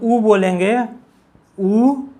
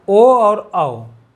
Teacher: तो इसके अंतर्गत 4 आते हैं, कौन कौन से, जब हम ऊ बोलेंगे, ऊ और कौन, बड़ा ऊ, और ओ और औ, कौन से, ओ और क्या, औ, यही चारों आते हैं किसमें, वर्तुल में। यही जब चारों को हम उच्चारण करते हैं तो हमारे जो ओठ की संरचना बनती है, कैसे बनती है, वृत्ताकार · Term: वर्तुल स्वर